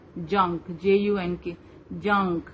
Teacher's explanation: اس میں نون ظاہر نہیں ہو رہا ہے